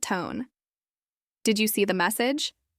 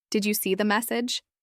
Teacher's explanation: First in a flat tone. Did you see the message? And now with rising intonation.